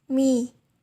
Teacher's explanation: the upper lips articulates with the lower lips